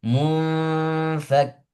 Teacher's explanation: Nun bertemu dengan fa langsung digabung